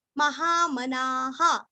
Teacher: ना पूरा बोल के विसर्ग का उच्चारण हा बोलना है, ना को थोड़ा सा दीर्घ करना लेकिन हा को नहीं करना